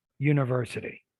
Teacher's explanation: I'd say the flap. Call me lazy. I don't pronounce a T.